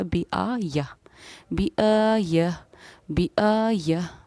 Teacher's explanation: جب گولتا پر وقف کرنا ہو تو گولتا ہائے ساکینہ ہا بن جاتی ہے